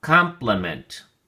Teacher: compliment has three syllables and the emphasis or stress is on the first syllable